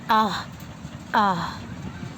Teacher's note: حمزہ ہا حلقے آخری حصے سے نکلتی ہے، جیسے آہ، آہ جو سینے کی طرف ہے۔